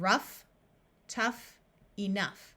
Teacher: there are a few words where GH has the sound of f in these words the o u will have a short u sound